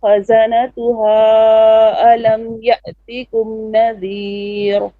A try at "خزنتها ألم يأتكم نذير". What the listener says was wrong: Wait. Now, kha is more heavy. خزنتها ألم يأتكم نذير. Ra here is flat. نذير.